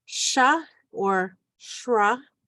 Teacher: SR, which makes like a SH kind of sound, so sha or shra.